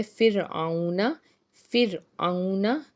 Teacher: را ساکن سے پیچھے زیر ہے تو اس کو ہم نے باریک ادا کرنا ہے را کو